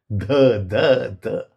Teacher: This is a dental d. The tongue must touch the teeth.